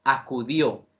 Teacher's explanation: Acudió tiene tilde en O, entendiendo que ahí vuelve a presentarse un diptongo, donde la vocal I cerrada y la vocal O abierta se unen para que, en este caso, se presente una sola sílaba